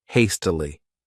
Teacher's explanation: This word has 3 syllables, and the stress is on that first syllable